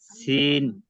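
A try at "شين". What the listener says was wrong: সিন না, শিন। এটা মুখটা ভরে সরসর একটা আওয়াজ হবে।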